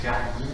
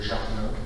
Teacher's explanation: le picard a aussi ce phénomène de maintien de la consonne vélaire C ou G devant A